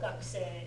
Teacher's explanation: the u in the ku does tend to get shortened